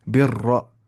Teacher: For example यहाँ पे रा मुशद्दद है उस पे ज़बर है, रा मुशद्दद है उस पे पेश है, उससे पहले क्या आ रही है जेर। रा को शुरू से पुर पढ़ेंगे, जैसे बिर रा, मोटी आवाज़ से पढ़ेंगे बिर रा